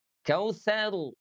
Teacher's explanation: Kalau di situ dia dibaca tebal ya. Kenapa? Karena huruf rnya disukunkan sebelumnya ada fathah.